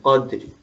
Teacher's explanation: تو جی وقف بالروم جب آپ کر رہے ہیں تو آپ تھوڑی سی حرکت، پوری حرکت نہیں پڑھتے. مثلا قدری کو پورا ری نہیں پڑھیں گے بلکہ ہلکا سا اس کو ٹچ دیں گے